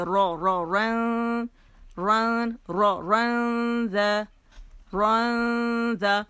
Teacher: لیکن اگر ہم کیا کریں گے، اخفا کریں گے تو پڑھا جائے گا نارن. را کی زبر اور موٹائی ضرور ادا کرنی ہے